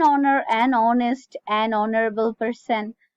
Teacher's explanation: here h is not sounded and that's why it is sounding like a vowel